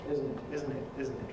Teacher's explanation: Estuary English, well, has certainly a glottal stop [ʔ] as a possibility for the final [t] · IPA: [ˈɪzən ɪʔ]